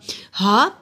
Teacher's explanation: حلق کے نچلے حصے سے ادا ہوتا ہے، ہا کے نیچے کھڑی زیر ایک الف کے برابر لمبا ہوگا۔